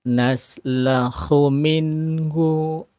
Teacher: nun mati bertemu dengan ha, izhar, nun matinya nunnya dibaca jelas ya, tidak disamarkan pendek cara bacanya ya.